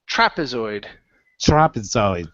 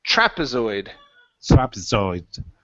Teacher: your last one here is trapezoid. Stress at the very beginning.